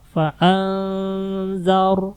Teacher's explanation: Di sini nun mati ketemu za. Nun mati ketemu za, ikhfa, samar.